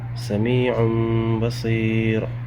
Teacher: یہاں تنوین کے بعد با آ رہا ہے، نون ساکن کو میم میں بدل دیں گے، غنہ اخفا کے ساتھ پڑھیں گے